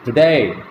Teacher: We utter the second syllable with greater breath force. We utter the second syllable loudly